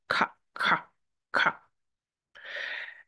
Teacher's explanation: The sound comes from the base of the tongue in the mouth, in the back of the mouth, and it's kind of a contraction. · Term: sound K